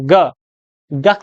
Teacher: ग जो है क वर्ग का हिस्सा है। और क वर्ग का उच्चारण स्थान कौन सा है, तो वो है आपका कंठ है